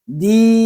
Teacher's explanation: sini ada ya mati dan sebelumnya ada huruf Dal berbaris kasrah maka cara membacanya adalah Madya yang panjang bacaannya satu Alif atau dua harkat